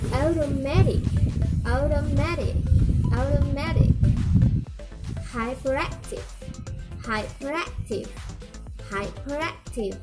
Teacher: The primary stress is on the third syllable. · And two-syllable prefix from a word of four or more syllables, there is usually secondary stress on the first syllable, no stress on the second, and primary stress on the third. The remaining syllables are unstressed, like automatic, automatic, automatic, hyperactive, hyperactive, hyperactive.